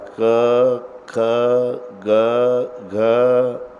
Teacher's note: कच कंठे स्थान आहे तुम्ही इथे कंठावर बोट ठेवा आणि ती पहिली लाईन उच्चारा